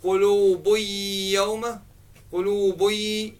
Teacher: there is gunna here, meaning nasalization, because when you're saying qulubuy yawma, qulubuy, if you touch the nose, you feel a little bit of a vibration · Ba with tanween, ba with dhamma, qulubuy, and then ya comes after that, so you don't read the noon there, you merge the noon into the ya. But what happens is, there is gunna here, meaning nasalization